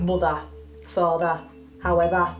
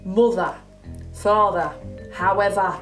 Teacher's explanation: When you get words that end in ER, like mother, father, however, instead of going we actually release it into more of an A sound, like you would say apple.